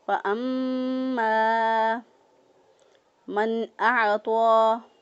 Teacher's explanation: تو حروف حلقی میں سے جب کوئی حرف آ جائے نون ساکن کے بعد تو اس وقت اظہار ہوتا ہے، تو ہم نے نون کی آواز کو ظاہر کرتے ہوئے پڑھا